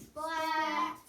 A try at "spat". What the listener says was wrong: Sounds like somebody's saying splat. Spat.